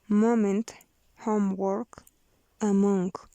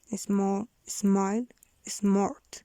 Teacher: Voiced bilabial nasal.